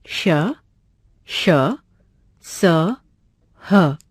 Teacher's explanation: जिन व्यंजनों का उच्चारण करते समय हवा के रगड़ खाने से मुख में गर्मी यानी ऊष्मा उत्पन्न होती है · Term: ऊष्म व्यंजन